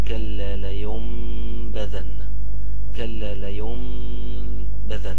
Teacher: ما تتنطقش النون وننطقها ميم